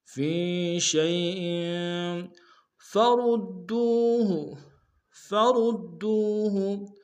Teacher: فرود میں را کو موٹا ادا کرتے ہوئے دال کے سامنے لیں گے، دال کو تشدید زور دیں گے، دال کو واو کے سامنے لیں گے، واو مدہ ایک دال میں کھینچیں گے۔